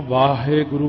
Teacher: ਵਾਵੇ ਦਾ ਕੰਨਾ ਜਿੰਨਾ ਮਰਜ਼ੀ ਲਮਕਾ ਕੇ ਬੋਲ ਦਿਓ। ਤੇ ਹਾਹੇ ਦੀ ਸਿਹਾਰੀ ਛੇਤੀ ਹੋਈ ਚੁੱਕੀ ਜਾਣੀ